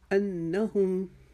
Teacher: انا کے اوپر نون مشدد کا ایک الف کا گنہ، اس کو جلدی سے انہم نہیں پڑھیں گے